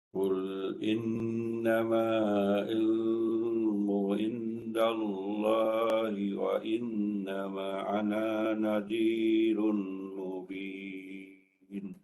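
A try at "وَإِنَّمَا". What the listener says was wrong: Ini tak cukup tu. Wa innama 4.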